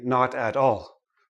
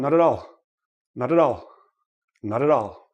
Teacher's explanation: when a word ends in a consonant and the next word begins in a vowel make sure you roll it in right roll the consonant into the vowel